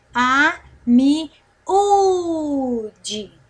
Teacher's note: nós temos aqui 4 sílabas e a penúltima é a mais forte. Então, no caso, é paroxítona.